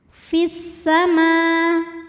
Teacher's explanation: Kemudian alif lamnya dinamakan dengan alif lam syamsiyah. Karena alif lam menghadapi huruf syamsiyah yaitu sin, maka alif lamnya tidak kita baca atau disebut dengan idgham syamsi.